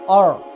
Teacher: یہاں را ساکن سے پہلے زبر آیا ہے اس لیے ہم اس را ساکن کو پر پڑھیں گے